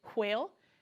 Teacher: Well, if I'm standing here with 2 fingers, I can say whale and feel the strong breath of air against my fingers. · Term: the digraph